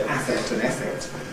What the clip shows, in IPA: ˈæfekt